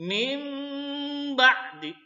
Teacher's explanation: didengungkan, dipanjangkan sedikit 2 ketukan atau 1. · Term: iklab